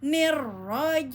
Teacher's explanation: Jim pastikan tidak ada desis, ya. Jelas tengah lidah dengan langit-langit